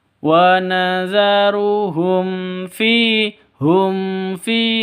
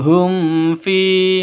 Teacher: Fi, seorang "mim sakin " ketemu "fa", jelas dan khas, Izhar Syafawi. Um fi, hum fi, ucapkan lurus, jangan dinasalkan. Hum fi, salah, langsung ke hum fi seperti itu.